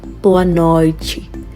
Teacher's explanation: We are getting Ch instead of T because that's the Brazilian accent